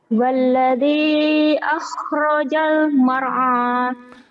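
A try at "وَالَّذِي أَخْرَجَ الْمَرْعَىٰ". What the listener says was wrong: Walladzi akhrajal mar'a. Kamu mar'a. Itu tuh yang bikin jelek tuh. Walladzi akhrajal mar'a.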